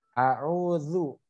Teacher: Ujung lidah bertemu dengan ujung gigi seri atas.